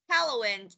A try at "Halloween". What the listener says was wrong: Anh nhấn âm đầu quá.